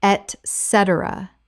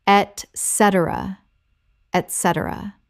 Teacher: Four syllables with the stress on the second. It begins with et, not ec.